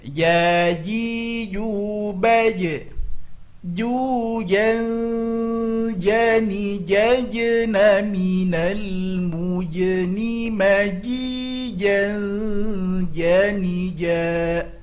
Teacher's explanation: Di sini perlu diperhatikan makhrajnya adalah tengah lidah ke tengah-tengah langit atas. Kebiasaan kita ujung lidah ke langit-langit atas, salah. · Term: huruf jim